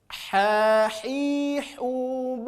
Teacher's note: huruf H keluar dari tengah-tengah tenggorokan · murni keluar dari tengah tenggorokan